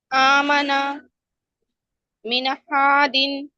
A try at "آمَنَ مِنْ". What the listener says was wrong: ہاں دیکھیں یہاں پہ بھی آپ کا نون ہل گیا. من دن ایسے کیا آپ نے؟ من دن.